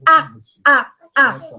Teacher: It's front position, even if it's low, it's front position of the mouth. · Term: front low one